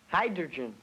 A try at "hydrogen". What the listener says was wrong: Not hydrogen. You transposed the R sound. The word is pronounced hydrogen.